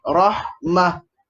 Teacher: kita kena tukarkan ta marbutah ni kepada ha dhamir.